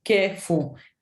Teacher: Can hear the stress being emphasized on this first part of the word